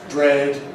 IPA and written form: bred (bread)